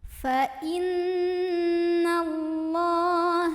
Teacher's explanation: karena ada Fathan tegak diatas huruf lam dibaca nya panjang dua harokat